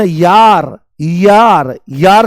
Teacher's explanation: जैसे ही आप य बोलोगे तो आपको ई सुनाई देगी। तो य में क्या होता है, य में ई की ध्वनि आती है, ई की ध्वनि, ई की ध्वनि आती है, य में ई की ध्वनि आती है, य में ई की ध्वनि आती है। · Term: अर्धस्वर